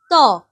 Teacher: দাঁতের গোড়াটা দেখো, জিভ, তুমি ত বলো, ত, দেখো তোমার জিভটা দাঁতের গোড়াকে স্পর্শ করছে, তাহলে উচ্চারণ স্থান এখানে দন্ত। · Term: দন্ত ব্যঞ্জন